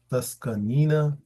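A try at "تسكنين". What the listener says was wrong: Taskunina. No, not ka. Kaf should have always dhamma because the middle radical you cannot change, right?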